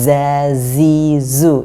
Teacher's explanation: karena sofir ini adalah tajamnya suara di telinga. Kalau kita bilang zu belum tajam. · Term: sifat sofir